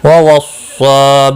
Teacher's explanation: ووصى صاد مستعلیہ ہے، پر پڑھا جائے گا، اس کے اوپر کھڑی زبر بھی ہے، ایک الف کے برابر کھینچ کر پڑھیں گے۔